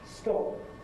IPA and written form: stɒp (stop)